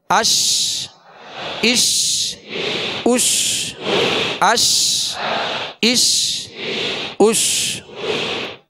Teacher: تو شین کو جب ادا کریں گے تو بیچ زبان، بیچ تالو سے لگے گا تو شین ادا ہوگی، اور شین کی ادائیگی میں آواز منہ میں پھیل جائے گی۔